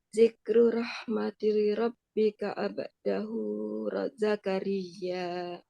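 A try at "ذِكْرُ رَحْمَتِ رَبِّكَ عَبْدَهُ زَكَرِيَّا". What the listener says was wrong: Diulang, rahmati tinya pendek.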